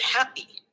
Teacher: Ambisyllabic consonant. The consonant P can be considered part of the coda of the first syllable hap, and the onset of the second syllable